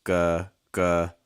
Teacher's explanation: So when you made that G, you raised the back of your tongue.